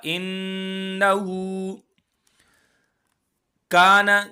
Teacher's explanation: کاف کو ایک الف کے برابر ہم کھینچیں گے، کیونکہ الف مدہ ہے۔ الف سے پہلے زبر آئے تو زبر والے حرف کو ایک الف کے برابر کھینچ کے پڑھیں گے۔